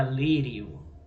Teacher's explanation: a semivogal + vogal ele é um ditongo crescente